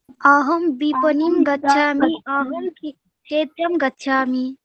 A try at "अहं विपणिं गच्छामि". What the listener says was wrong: उत्तमम्।